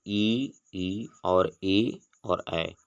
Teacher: ई और ए और ऐ जो होता है वह जिह्वा के अग्रभाग से बोला जाता है, जबकि अ जो होता है वह जिह्वा के मध्य भाग से अ को बोला जाता है। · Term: अग्र स्वरों